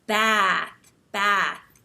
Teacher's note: you smile and you have this wide mouth, wide set mouth, and you hold your tongue up high. And when you talk, you have a more nasal sound because American English tends to be a little bit more nasal. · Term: short A sound